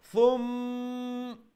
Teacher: You do the ghunna on the first meme.